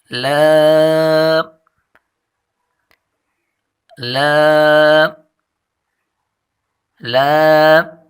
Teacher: زبان کا کنارہ جب سامنے والے ایک دانت اور ان کے ساتھ والے تین دانت اور ان کی مسوڑوں کو لگے تو یہ حرف ادا ہوتا ہے، اور دونوں طرف سے اس کو نکال سکتے ہیں، یعنی زبان کا کنارہ جب ثنایا کے ایک دانت اور ان کے ساتھ والے 3 دانتوں کی مسوڑوں کو لگے تو یہ حرف ادا ہوتا ہے۔